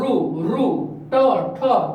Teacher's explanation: તો કે મૂર્ધામાં રૂ ટ ઠ તમે બોલશો એટલે તમને ખબર પડશે, જીભ બેવડી થોડીક વળશે અને સીધી તાળવે ભટકાય, એને શું કહેવાય તો કે મૂર્ધન્ય